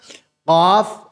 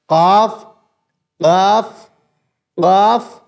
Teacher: और उसके मुकाबिल ऊपर का तालू यानी कि बिल्कुल एकदम जो जबान की ये जो जड़ है यानी जो गले की तरफ है वहां से हम उसको ऊपर लगा देंगे